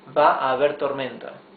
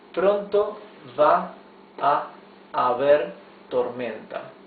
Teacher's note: You can just say va a haber tormenta, you see? Just like one longer A that unites the whole sentence.